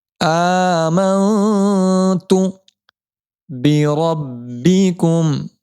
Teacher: نون ساکن کا اخفا ہوگا, ایک الف کی مقدار نون ساکن کی آواز کو ناک میں چھپا کر پڑھیں گے